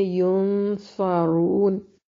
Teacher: صاد کو موٹا اور را کو بھی موٹا ادا کریں گے